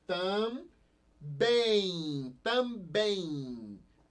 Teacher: Esse M aqui vai ter som de I, juntamente com esse outro N, ó. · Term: semivogal